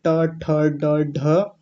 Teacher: हमारे मुख में ऊपर जब ट बोलते हैं और ऊपर जब जीहवा हमारी ऊपर जाकर के टकराती है जो गड्ढा जैसा होता है तो उसको मूर्धा बोलते हैं · जैसे ट वर्ग जो होता है वो पूरा मूर्धा से बोला जाता है, ट ठ ड ढ। और मूर्धन्य शकार, ये वाला श, ये सब मूर्धा से बोले जाते हैं। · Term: मूर्धन्य वर्ण